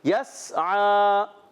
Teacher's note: سین کو نہیں ہلانا، سیٹی دینی ہے سیٹی کے ساتھ